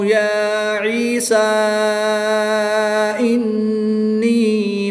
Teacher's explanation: حمزہ دوسرے کلمے میں ہے تو یہاں پر مد منفصل ہوگی، 2 سے 3 الف تک کھینچ کر پڑھیں گے